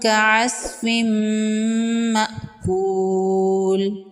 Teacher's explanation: تنوین کے بعد حروف یرملون میں سے میم ہے، یہاں پر ادغام ہوگا مع الغنہ، یہاں پر غنہ کے ساتھ ادغام کریں گے۔